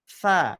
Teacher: Harusnya ada hentakan udara keluar, baru itu betul. Kalau belum ada udara yang terasa pada telapak tangan, berarti sifatnya masih belum keluar itu. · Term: hamas